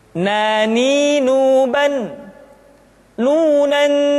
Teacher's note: caranya menyentuhkan ujung lidah kita di antara posisi ro dengan la